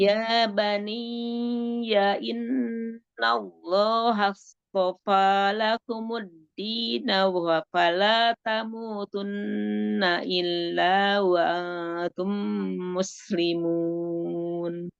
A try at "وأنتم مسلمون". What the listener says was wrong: Terus itu keseret lagi tuh tadi wa antum. Jadi Umi udah wa antum gitu. kan tadi sampai wa antum muslimun. A-nya nggak sempurna lagi, coba di